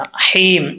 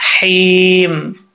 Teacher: تسمیہ کے لاسٹ پہ جو ہا ہے یہ بریکی پڑھنی ہے، اس کو بھاری آواز کے ساتھ نہیں پڑھنا۔ حیم، اس کا تعلق حلق کی طرف ہے، سینے کی طرف نہیں ہے۔